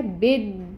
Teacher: دال تشدید کے ساتھ، جس کا مطلب ہے کہ ایک دال ساکن ہے اور ایک دال زیر کی حرکت کے ساتھ ہے، تو دونوں دال ادا کریں گے تو ٹائم ٹیکنگ ہوگا۔ با کو دال کے ساتھ ملائیں گے جو ساکن ہے، بد، پھر دی کو پڑھیں گے، ٹھیک ہے۔